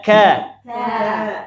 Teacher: perhatikan ka sambil lidahnya turun ka karena tipis